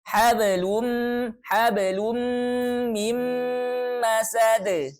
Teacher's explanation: ditahannya idgham bi gunnah itu kita dengungkan, ditahan selama 2 harokat.